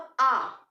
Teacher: उसके बाद दीर्घ स्वर की बात आती है। दीर्घ यानी कि जहां 2 मात्राओं का समय लगे, जहां समय जो है वो बोलने में ज्यादा लगे